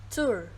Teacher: This has a starting point slightly closer than o in put and pull.